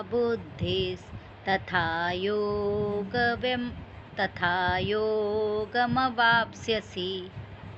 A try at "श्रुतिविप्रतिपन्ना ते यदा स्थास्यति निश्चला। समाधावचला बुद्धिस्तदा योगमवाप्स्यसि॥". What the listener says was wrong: ये तुमने यदा को यथा बोला है और नीचे भी तदा को तथा बोला है।